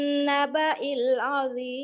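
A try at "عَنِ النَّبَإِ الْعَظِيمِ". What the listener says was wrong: Nah, itu turun. Turun. Harusnya datar. Seharusnya datar. Anin naba'il azim. Begitu. Azim. Datar. Segitu. Azim. Azim. Datar gitu.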